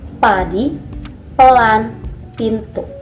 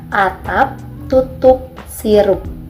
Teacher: Konsonan P merupakan bunyi letup bilabial tidak bersuara dalam sistem fonetik. Artinya letup atau plosif.